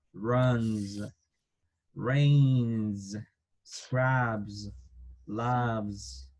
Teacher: De la tercera persona del singular, las letras S las vamos a pronunciar con una pequeña Z.